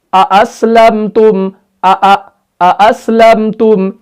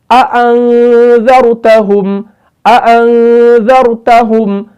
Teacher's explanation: जैसे पहले हमजा की आवाज निकाली वैसे ही बाद वाले की भी निकालनी है, खूब जाहिर करना है। यानी ये यहां पर लगना चाहिए कि हम दोनों हमजा को बराबर पढ़ रहे हैं, ऐसा ना कि हम पहले हमजा को पढ़े बाद वाले को हम धीमा कर दें, नहीं, बराबर दोनों को तहकीक के साथ पढ़ना है।